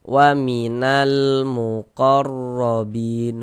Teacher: Huruf ra memiliki harakat fathah dibaca tawhim juga. Muqarrobin bin dibaca panjang.